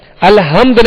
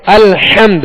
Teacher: ہا ابتدائے حلق سے اور ہا درمیان حلق سے ادا ہوتی ہے